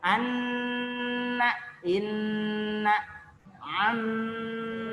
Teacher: Maka syarat ketika kita mengucapkan mim dan nun harus ada getaran di rongga hidung. · Jadi harus ada getaran di rongga hidung, itu disebut juga gunnah. Ya, ketika ada getaran di rongga hidung, maka disebutlah gunnah.